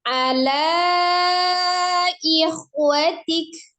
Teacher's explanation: lanya panjang karena ada mad, sesudahnya ada huruf alif atau hamzah di beda kata, itu panjangnya jadi 4 atau 5.